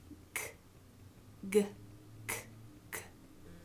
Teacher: These are velars, and both of these are produced in the same place, but they are voiced or unvoiced, and the g is the voiced one.